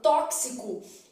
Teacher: na palavra tóxico Eu tenho um X com valor de KS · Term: dífono